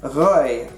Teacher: it uses a uvular R instead of a trilled R